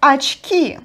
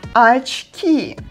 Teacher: Just don't forget that unstressed O represents A sound. So that's why we write очки, but we pronounce it like очки.